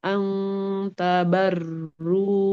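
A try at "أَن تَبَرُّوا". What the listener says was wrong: Diulang dari ang tabarus sekali lagi huruf O-nya dia harus tebal. Nah, dari kemudian selain dari tebal dia harus mengalir suaranya, tapi getarnya nggak boleh terlalu banyak, nggak boleh ang tabaru.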